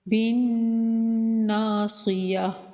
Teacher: با کو نون سے ملائیں گے، نون مشدد کا غنہ کریں گے اور ایک الف کے برابر لمبا بھی کریں گے۔